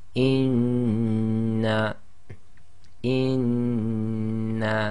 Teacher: it's just holding that sound in the nasal cavity